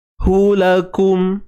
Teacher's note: Hu tu jangan terpanjang pula ya. Hu tu satu sahaja, satu harakat.